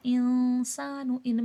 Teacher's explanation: انسان ان میں اخفا ہوگا، نون ساکن پہ اخفا ہوتا ہے